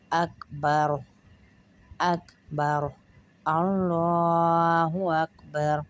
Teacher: کاف کو پتلا پڑھیں گے، را کو پھر موٹا پڑھیں گے